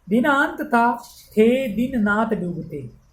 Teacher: अब द वर्ण दंत्य हैं, न भी दंत्य हैं, त भी दंत्य हैं, थ भी दंत्य हैं, ये सारे दंत्य वर्णों की बार बार आवृत्ति हुई है, इसलिए यहाँ श्रुत्यानुप्रांस यानी सुनने में एक जैसे लगते हैं, एक ही स्थान से उच्चरित होने वाले हैं, इसलिए श्रुत्यानुप्रांस है।